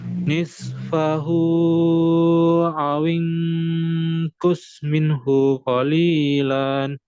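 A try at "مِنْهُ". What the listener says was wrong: Minhu. Hu-nya jangan dijeda. Tak ada tanda panjang di situ.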